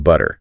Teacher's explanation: Almost a D sound instead of a hard T. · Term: flap T